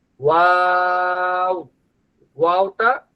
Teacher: যার ঠোট যত বেশি গোল হবে তার ওয়াও এর উচ্চারণ তত সুন্দর হবে। ওয়াও ওয়াওটা ঠোট গোল থেকে শুরু হবে। আবার ঠোট গোল অবস্থায় শেষ হবে।